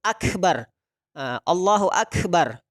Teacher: kalau kita menyebut Akbar Aa Allohuakbar jadi harus ada habisnya karena sifat huruf Kaf ini adalah ada hentakan nafas